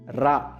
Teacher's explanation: நாவின் நுனி மேல் அன்னத்தின் முதல் பகுதியை தொட்டு வருவதால் ரகரம் தோன்றுகின்றது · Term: இடையின ரகரம்